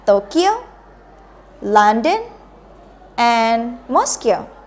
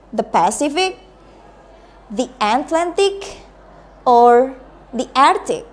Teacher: Untuk pilihan kedua, you use raising intonation again. The last choice, pilihan terakhir menggunakan drop intonation. Jadi turun untuk yang terakhir tetap. Pilihan pertama menggunakan raising berarti naik.